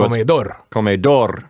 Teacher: And the sounds like you're putting the accent on the last syllable of comedor. Yeah, it goes on the last syllable, on the O.